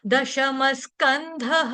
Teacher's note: विसर्ग का जो उच्चारण होगा आधे स के साथ होगा क्यों क्योंकि विसर्ग के आगे शब्द आपका स आ रहा है